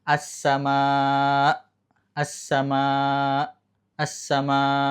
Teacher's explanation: harus ada kerasa, ada hamzahnya, ada hentakan sedikit tek gitu. Berhentinya tuh tiba-tiba tek karena di situ ada hamzah.